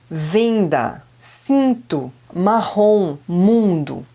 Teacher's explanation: mesma forma que nós temos as vogais orais nós temos também as vogais nasais que são aquelas que parece que a gente tá apertando no nariz